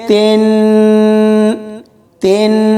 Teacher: تا کو نون کے ساتھ ملائیں گے تو غنہ ہوگا